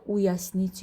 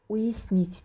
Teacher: Ya hərfinin üzərinə udarenya, yəni vurğu düşməyəndə biz onu əgər samitdən sonra gəlirsə i tələffüz edirik. Saitdən sonra və yaxud znaqdan sonra gəlirsə ye kimi tələffüz edirik.